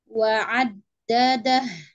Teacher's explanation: Malam wa'addadah. Jika dam, ada huruf dal bertasydid. Ya, harus dibaca kuat ya, karena dia punya sifat syiddah